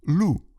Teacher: Французский гласный «у», как в слове «лу» – волк, также произносится четко и напряженно даже в безударной позиции.